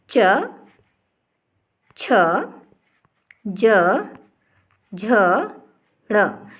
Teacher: इन सभी का उच्चारण करने पर क्या होता है? जीभ तालु को स्पर्श करती है। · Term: तालव्य